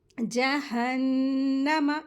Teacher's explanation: नून मुशद्दद है, गुन्ना करेंगे, ठीक है। जहन्नमा, मीम को जल्दी पढ़ेंगे लेकिन इसको खींचेंगे नहीं।